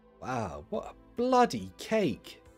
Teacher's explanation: you need the emphasis on the word bloody otherwise it doesn't sound good